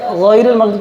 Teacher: غین پہ زبر ہے، تفخیم کا یہ دوسرا درجہ ہے